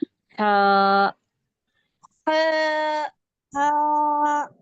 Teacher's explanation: हलक से, दरमियानी हलक से इसकी आवाज निकालेंगे और थोड़ा सा खींच के पढ़ेंगे। हा, हा, हा, हलक से आना, हा।